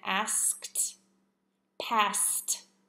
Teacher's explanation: the ending T should just have a t sound with no extra syllables before